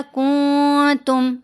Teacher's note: नून की आवाज़ को हमने नाक में छुपाया